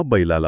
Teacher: पण बैलाला म्हणताना लाच्या आधी आचा स्वर आल्याने जिभेला एक प्रकारचा रॅम्प मिळतो. उच्चार अत्यंत गुळगुळीत किंवा स्मूथ होतो.